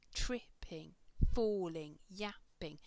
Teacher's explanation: it's the stress on the first syllable and then the next one is unstressed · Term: trochaic rhythm